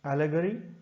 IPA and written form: ˈæl.ə.ɡə.ri (ALLEGORY)